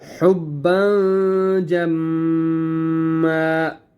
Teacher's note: جیم جو ہے وہ حروف حلقی میں سے نہیں ہے، اس لیے ہم نے یہاں پہ اخفا کرنا ہے